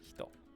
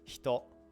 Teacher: So because this E, which vibrates your throat, is surrounded by H and T, which don't vibrate your throat, you don't activate your voice box to pronounce them, it just gets kind of muted. So you pronounce it as if you move your mouth to like pronounce the E, but you just don't turn your voice box on, essentially.